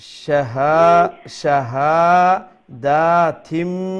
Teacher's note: নুন সাউন্ডটাকে আমরা মিম সাউন্ডে পরিণত করে দেব